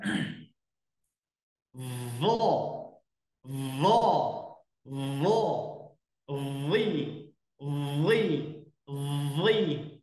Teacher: Lidah bagian belakang diangkat ya, diangkat ke arah langit-langit seperti itu. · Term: huruf dha